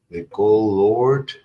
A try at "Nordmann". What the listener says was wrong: Nord with an N.